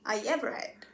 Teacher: the y sound came in between I and ever. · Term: linking y